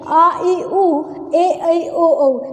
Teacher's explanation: दीर्घ स्वर जिनको बोलने में 2 मात्रा का समय लगे, यानी कि आ ई उ ए ऐ ओ औ, ये जो सातों हैं ये हमारे दीर्घ स्वर के उदाहरण हैं।